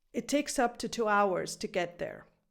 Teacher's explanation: Now the word to appears twice, and it is both times reduced. And I've also put the number 2 in this sentence so you can see the difference.